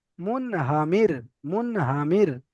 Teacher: সাকিনের ডান দিকে জের এসেছে, তাই রটা বারিক হবে, মুখ না গোল করে পড়তে হবে